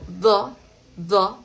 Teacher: Vamos a poner la lengua un poquito entre los dientes, un poquito, al mismo tiempo las cuerdas vocales deben vibrar. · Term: el sonoro